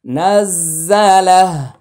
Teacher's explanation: উল্টা পেশে ওয়াকফ করলে টান হবে না, মাদ হবে না, হা সাকিন পড়তে হবে এখানে